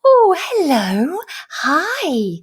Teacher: you tend to go a bit higher pitch · And you really modulate, you have these big sweeping tone changes, and everything's much higher pitched. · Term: parentese